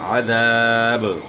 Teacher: آپ نے با میں قلقلہ کرنا ہے کیونکہ با حروف قلقلہ میں سے ہیں